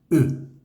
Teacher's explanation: ese sonido en francés siempre va a sonar u con la boca cerradita es un solo un golpe de sonido No se pronuncia ni la x ni la e ni la